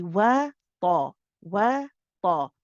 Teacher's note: Waw is light, let the lips come spread a little bit as you say the fatha. Wa wa ta. So the ta is heavy.